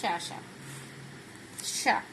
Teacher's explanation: श ध्वनि का उच्चारण स्थान क्या है हमारे पास? तालव्य।